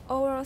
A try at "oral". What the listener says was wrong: Not oral, oral. Not O, don't say O, just say R.